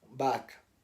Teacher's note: Outra característica muito típica dos sotaques do norte é que pronunciam o V como sendo um B.